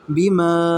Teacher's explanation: آمن الرسول، با زیر بی، میم الف مد زبر ما، بی ما کے اوپر جو مد ہے اسے ہم 2 یا اڑھائی الف کے برابر کھینچیں گے